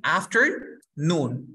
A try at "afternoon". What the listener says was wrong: No, así. In the afternoon. La fuerza de voz al final.